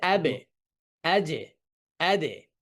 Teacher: নিচে কলকলার সাউন্ডটা থাকবে নিচের দিকে, অর্থাৎ অনেকটা কাসরার দিকে মাইল হবে